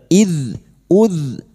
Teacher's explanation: huruf dzal memiliki sifat jahr dan rakhaah tertahannya nafas dan mengalirnya suara